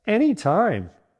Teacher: Say anytime with a slight upward intonation to make it sound enthusiastic. Keep it short and snappy and don't drag it out.